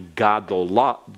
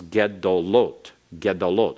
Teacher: Instead of gadolim, that ga has to shorten, and the shortest possible vowel is the simple schwa